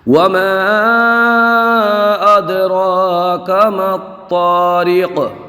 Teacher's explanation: تو کو جماؤ کے ساتھ پڑھیں گے اور قاف میں حالت وقت میں قلقلہ کر دیں گے